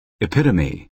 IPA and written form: ɪˈpɪtəmi (epitome)